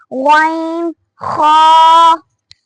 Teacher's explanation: ادنی حلق، حلق کا وہ حصہ جو منہ کی طرف ہے، اس سے غین اور خا نکلتے ہیں